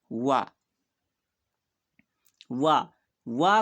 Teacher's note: दंत और ओष से वा का उच्चारण होता है